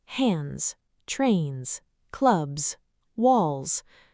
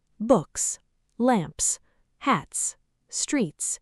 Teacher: After voiced sounds and vowels, it's pronounced like Z. Hands, trains, clubs, walls. After voiceless sounds, it's pronounced like S. Books, lamps, hats, streets.